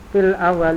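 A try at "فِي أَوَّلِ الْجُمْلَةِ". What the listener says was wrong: La laisal fil bal fi. Fi awalil. La laisa fil awalil. Fi awalil Nah, fi awalil jumlati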